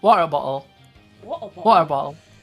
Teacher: there's a lot of glottal stops in there